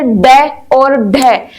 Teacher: हमारी जीभ जो है, जिह्वा है, अचानक से धड़ाम से पड़ेगी और बगल से हवा निकलेगी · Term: उत्क्षिप्त व्यंजन